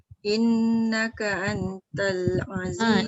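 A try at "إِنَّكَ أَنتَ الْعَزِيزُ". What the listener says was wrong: Antal tu jangan pendek dengung dia. Antal. Satu lagi, nun bertemu ta ni dia tak boleh lekat lidah dekat langit. Itu syarat dia. Inna tu kan lidah lekat kat langit. Tak apa sebab dia dengung nun sabdu. Nun bertemu ta tak boleh sebab dia ikhfa. Innaka lidah tu tengah-tengah.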